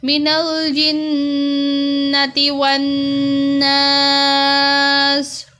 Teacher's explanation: نون کو لمبا نہیں کرنا، جنتی والے اور ناس والے کو لمبا کرنا ہے کیونکہ اس کے ساتھ الف ہے